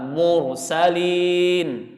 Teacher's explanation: Ro sukun sebelumnya dhammah, mursalin. Kan sebelumnya dhammah itu. Ya, maka dia tebal. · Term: ro-nya harus tebal